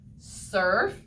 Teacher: i hear er in the middle of the word surf